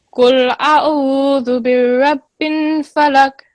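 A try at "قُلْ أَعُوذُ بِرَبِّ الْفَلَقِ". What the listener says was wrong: Okay, so here first of all, it sounded like you have you said Qul Bismillahirrahmanirrahim, Qul a'udhu birabbil. It sounded like there's a shadda on the ra, but it's not. It's just the fatha. Qul a'udhu birabbil, like that.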